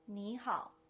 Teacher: when I said ni on its own, I used the third tone, but when I said nihao, the ni turned into a second tone